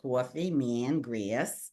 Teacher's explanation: We nasalize vowels, coffee, man, grass.